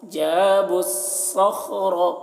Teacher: با کو صاد سے ملا کر پڑھیں گے